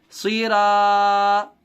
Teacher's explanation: الف سے پہلے را پر زبر ہونے کی وجہ سے الف مدہ ہوگا، الف مدہ کو تھوڑا کھینچ کر پڑھیں گے